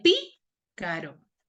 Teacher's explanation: En pi tiene la mayor fuerza de voz.